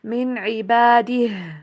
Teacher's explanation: आइन की आवाज़ भी क्लियर, मिन के ऊपर गुन्ना नहीं करना। मिन इबादिह, आखिर में हा की आवाज़ भी क्लियर हो।